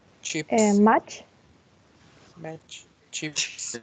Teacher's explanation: it's voiceless and it's oral, and the front part of the tongue is touching the hard palate or the post-alveolar region